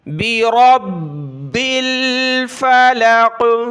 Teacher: را کو موٹا کریں، کلرفل ہے